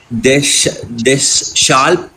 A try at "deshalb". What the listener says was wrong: See, I told you, there is no combination of SH in German. There is no SH in German. So it cannot be dash al. It cannot be dash al. So it has to be deshalb.